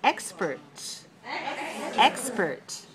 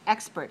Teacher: Expert has 2 syllables, and it's stressed on the first